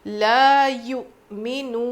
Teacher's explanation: واو مدہ ہے تو یہاں پر ہم 5 الف تک بھی کھینچ کر رک سکتے ہیں